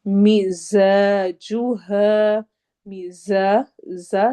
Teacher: زا سیٹی والی آواز ہے اور الف مدہ ہے